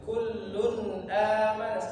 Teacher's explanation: Jelas, dia enggak ditahan sama sekali. Langsung dibaca ke huruf selanjutnya.